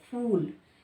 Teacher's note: फूल का उच्चारण दोनों होठ मिलाकर किया जाता है, ठीक है। किस तरह करेंगे, दोनों होठ मिलाकर फूल, ठीक।